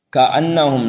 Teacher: نون مشدد ہے، گنہ کر کے پڑھیں گے